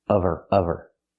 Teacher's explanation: Not out of her, the H is silent. Because there's no consonant, we need the V sound.